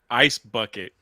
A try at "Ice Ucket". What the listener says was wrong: No. It's Ice, and then his last name is Bucket without the B.